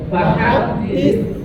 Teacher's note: sekarang ujung lidahnya nempel dengan gigi atas. Ujung 2 gigi depan atas. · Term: huruf sa